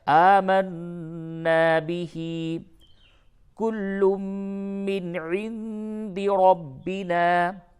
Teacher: میم مشدد ہے، غنہ ہوگا